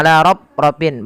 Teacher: Pada lafal rafrafin huruf fa tidak boleh bibir kita merapat sehingga nanti terdengar dengan bunyi huruf P. Misalnya ala rafrafin, bukan, karena dia fa ada salah satu sifat yang harus dibunyikan, yaitu sifat hamusnya.